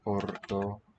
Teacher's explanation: There's accent on the ka.